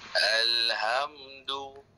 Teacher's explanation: dekat ha tu seperti biasalah kena kecilkan sikit suara dan tolak angin kuat sikit